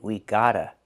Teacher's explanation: We hear the pronunciation of T change to a fast D.